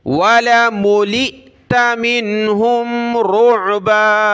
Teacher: ملئت حمزہ ساکنہ جھٹکا دیں گے